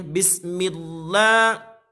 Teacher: Nah, ketika kita mengucapkan millah, ini adalah lam jalalah. Lam jalalah yang sebelumnya mimnya kasroh, maka tarkik, yaitu tipis.